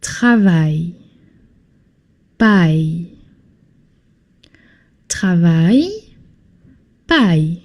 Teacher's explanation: You don't pronounce the L in the end, okay? Aille, no L.